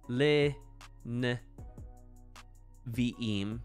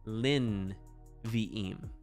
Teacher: have two vocal shavats together in hebrew so what happens is the first vocal sheva lengthens to become heric and the second vocal shava ends up becoming a silent shava